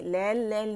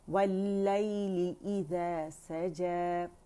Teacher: उसमें क्या होता है लीन के लिए, जैसे या साकिन से पहले क्योंकि फतहा आ रही होती है तो फतहा की आवाज़ को पहले 1 काउंट के लिए ऊपर लेके जाते हैं, फिर या के साथ नरमी से मिलाते हैं